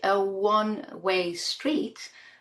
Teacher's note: now we have the sound w. This is a semi-vowel sound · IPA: /w/